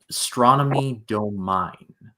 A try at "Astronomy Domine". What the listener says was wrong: Not do, daw with a tall vowel, domine.